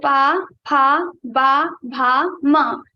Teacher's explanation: Both the lips above and both the lips will touch each other and will produce the sound of pa varga.